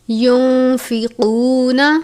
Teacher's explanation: نون ساکن کے بعد فا ہے. فا حروف اخفا میں سے ہے. اخفا کے معنی ہے آواز کو ناک میں چھپانا یعنی مکمل غنہ نہیں کرتے